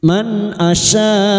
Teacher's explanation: asya bertemunya mat dengan hamzah dalam satu kalimat mat wajib mutasil 5 harokat kita panjangkan